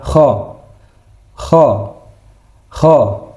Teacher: Sama seperti huruf H, tapi dia sedikit agak tenggorokan ke dalam.